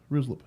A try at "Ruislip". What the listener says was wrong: You got way too many sounds in there. It's got to be shorter than that. It's got to be shorter than that.